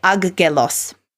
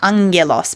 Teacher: I said angelos because two gammas in a row, it makes the sound ng, as opposed to two hard Gs.